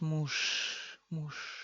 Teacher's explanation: Muž se convierte en sh.